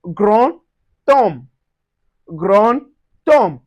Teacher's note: the D changes to a T and we pronounce ti gron tom.